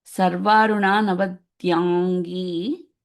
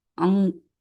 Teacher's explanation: This is again that Anuswaram is changing to NG sound.